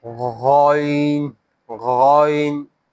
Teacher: Upper back part of the throat.